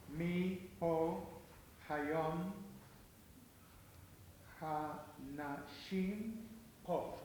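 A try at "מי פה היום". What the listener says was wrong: Okay, but the second word is not po. Correct. It's not po. It's fo. Mi fo hayom hanashim po.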